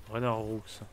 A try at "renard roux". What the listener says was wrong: Non, on dit renard roux. Non, on a une syllabe. Renard roux. Renard roux.